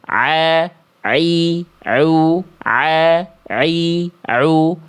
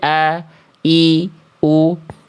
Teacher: kalau ain itu dilafalkan harus lebih effortnya lebih kuat dibanding hamzah. Hamzah itu nggak perlu effort kuat-kuat, dia sudah keluar seperti senatural kita melafalkan a i u pada abjad alfabet a i u.